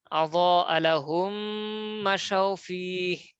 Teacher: মিম সাকিনের পর মিম আসছে, তাসদিদ দিয়ে মিলিয়ে পড়বো। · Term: এদগামে মিসলাইন